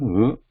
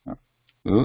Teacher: Lu, this is a dental sound.